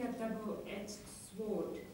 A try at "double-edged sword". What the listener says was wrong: Sword, no W. Sword, silent.